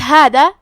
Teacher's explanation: کلمت ہادا، یہاں حرف دال ہے، دال کی ادائیگی زبان کے سر اور اوپر والے دانتوں کے اندرونی کناروں سے ہے، ہم دال کو وہیں سے پڑھیں گے۔